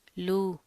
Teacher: واو مدہ تھوڑا سا کھینچ کے ادا کریں گے ایک الف کے برابر